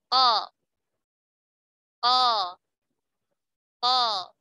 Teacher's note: Hati-hati mengucapkan huruf qaf mirip ke hati karena ada perbedaan antara qaf dengan kaf. Kalau qaf pangkal lidah bertemu langit-langit yang lunak.